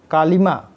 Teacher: कालिमा में माँ तो सबल है, इसी पर धक्का लगता है, और का पर उससे कम और ली पर सबसे कम बल पड़ता है। अतः कालिमा, जब हम कालिमा शब्द बोलते हैं तो क पर कम लगता है, ली पर उससे भी कम लगता है और म पर सबसे ज़्यादा लगता है। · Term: स्वराघात